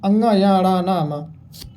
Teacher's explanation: ध्वनि नाक से ज़्यादा निकल रही है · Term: नासिक के व्यंजन